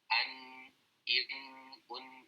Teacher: Nun itu kan makhrajnya dari ujung lidah mengarah ke langit-langit. Ditempelkan kan.